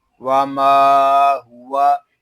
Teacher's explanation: واو دونوں ہونٹوں کی گلائی سے ادا ہوتا ہے